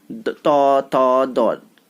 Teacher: त थ द touch होते हैं दांतों में।